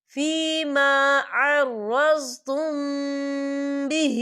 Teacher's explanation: یہاں میم ساکن ہے اور میم ساکن کے بعد با آ رہا ہے، تو ہم یہاں اکفا شفی کریں گے۔